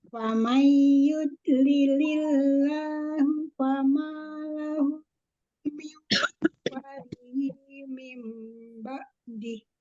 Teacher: Nun sukun ketemu huruf ya, idgham bigunnah, nunnya dimasukkan ke huruf ya, dibaca gunnah. Dibaca 2 sampai 4 harokat.